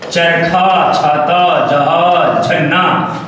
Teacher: जो आपकी जिह्वा है वो आपके तालु को स्पर्श कर रही है। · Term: तालव्य ध्वनियां